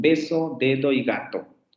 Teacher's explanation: Oclusiva bilabial, luego tendríamos la oclusiva dental, aunque aquí la podemos dejar como alveolar, y luego la oclusiva velar, sonora. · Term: oclusivas sonoras